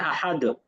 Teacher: দ হবে একটু হালকা একটু ধাক্কার মত হবে কলকলা বলে থাকি